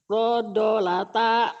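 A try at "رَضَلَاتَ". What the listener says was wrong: Hurufnya mah udah bener. Panjang pendeknya. Yang panjangnya ujungnya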